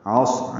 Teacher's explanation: عین وسط حلق سے ادا کریں گے، صاد سے ملائیں گے، صاد پر پڑھیں گے اور اس میں سانس جاری رکھیں گے پڑھتے ہوئے، اور را بھی پر پڑھیں گے اور اس پہ وقف کر دیں گے۔